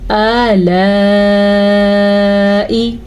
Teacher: یہ مد تقریباً 3 سے 4 سیکنڈ تک لمبی کی جانے والی مد ہے۔